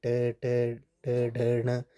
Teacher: मूर्धन्य यानी कि तालु के मूर्धा भाग से